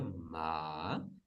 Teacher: it start a bit lower than the middle tone and it continue to go down and then rise quite swiftly very much up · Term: rising tone